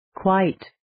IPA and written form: kwaɪt (Quite)